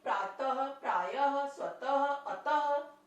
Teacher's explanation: विसर्ग का जो हम लोग उच्चारण करते हैं वो ह के रूप में करते हैं